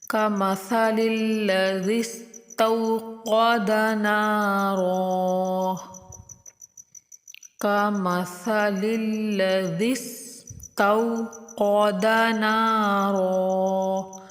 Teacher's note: قاف کو موٹا کر کے پڑھیں گے اور را کو بھی پر پڑھیں گے